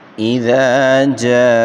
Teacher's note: الف مدہ ہے اور اس کو 1 الف کی مقدار کھینچ کر پڑھیں گے